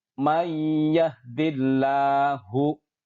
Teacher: Perhatikan, di situ ada nun mati bertemu dengan iya. Maka kita leburkan nun matinya ke huruf idgham di depannya yang berupa ya dan dibaca dengan mendengung. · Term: idgham bi ghunnah